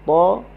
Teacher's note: hujung lidah berada di gusi. Ta, huruf isti'la, baris atas.